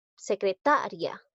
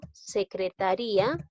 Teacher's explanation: Secretaria, pero en este caso no hay tildación disolvente porque la que suena más es la sílaba ta, no es la i